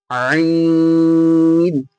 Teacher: কণ্ঠনালীর মাঝখান হতে উচ্চারিত হয় আইন